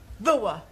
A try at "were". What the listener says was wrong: Almost. Try again, but this time, don't say ower, just were.